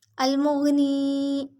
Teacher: میم کو غین سے ملائیں گے، غین موٹا پڑھیں گے، نون پہ یا مد ایک الف برابر لمبا کریں گے